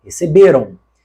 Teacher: Esse ão, que embora na escrita seja AM, na fala é um ditongo nasal